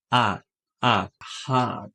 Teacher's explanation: O som curto de O é A. Parece um O, mas lembra um pouco o A.